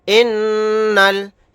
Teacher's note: حمزہ نون زیر ان، نون لام زبر نل، انل. یہاں پر نون کے اوپر تشدید ہے تو یہاں پر غنہ کر کے پڑھیں گے